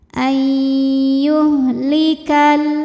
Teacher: Lalu ada idghamunah. Karena nun sukun menghadapi ya maka nun masuk ke ya. Ai disertai dengung.